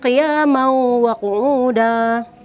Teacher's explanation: Bacaannya qiyamau wa qu'uda. Qiyamau, tanwin bertemu dengan waw ini dibaca berdengung